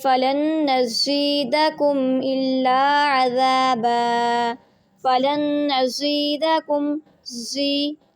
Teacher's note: حروف صفیریہ ہے، اس میں سٹی کی آواز آنی چاہیے آپ کی